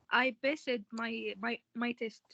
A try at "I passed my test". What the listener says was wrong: We don't pronounce the da. It's ta. So I passed my test.